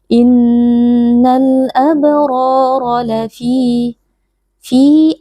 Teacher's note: ada Mad thi'i karena ada ya sukun yang sebelumnya berharakat kasrah dibaca panjang dua harakat